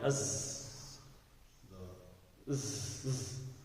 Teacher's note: یہ جو زے ہے اس کے اندر ایک سیٹی کی آواز آئے گی